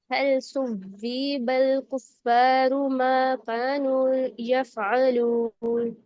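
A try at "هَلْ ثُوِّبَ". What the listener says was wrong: सुवीबल ऐसे ना वाव जेर लंबा हो गया। सुवीबल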